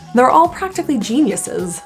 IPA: ðeɪr ɑl ˈpræktəkli ˈʤinjəsɪz